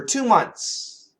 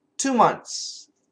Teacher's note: vibrated so month month but notice we have the N THS the n and the S are really strong the th is weak so we can cancel the th